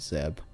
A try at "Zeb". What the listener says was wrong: Funny how you call it Zeb, like pronouncing it almost with a Z.